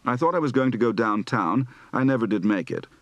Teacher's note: Southern accent practice for both lengthened diphthongs and rising final tones.